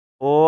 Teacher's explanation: कंठ और ओष्ठ से, तो कंठोष्ठ हो जाएगा